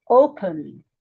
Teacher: The stress here is on the first syllable, O.